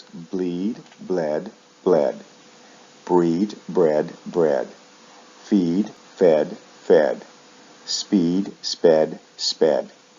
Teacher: Now you'll need to notice the sound shifts in the past and the past participle. Verbs like feed shift vowel sounds in the past and the past participle, usually from long E to short E.